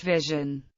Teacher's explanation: Voiced palatal alveolar sibilant, as the S in English vision